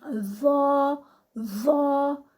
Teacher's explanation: دونوں دانتوں کے درمیان خاص طور پہ اوپر والی جو دانت ہیں ان کے ساتھ جو زبان کی نوک ہے وہ لگتی ہے